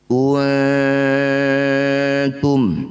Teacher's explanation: bunyi nun dengungkan dua harakat ketika dengung ujung lidah sudah ada di pangkal gigi seri atas untuk bersiap-siap bunyikan ta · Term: ikhfa aqrab